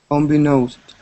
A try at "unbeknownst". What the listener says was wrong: Get that N right there. Unbeknownst.